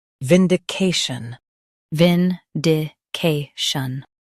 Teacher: Stress ca and keep shun soft.